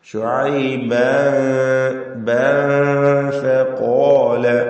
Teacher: ഫഖാല ശുഐബൻ എന്നതിലെ തൻവീനിനെ ഇഖ്ഫാ ഹഖീഖി നൽകി അവ്യക്തമാക്കി മണിക്കണം. ശേഷം ഫാഇ ഇസ്തിഫാലിന്റെ ഹർഫ് വന്നതുകൊണ്ട് തൻവീനിൽ തർക്കീഖോടുകൂടിയുള്ള മണിക്കലാണ് നൽകേണ്ടത്.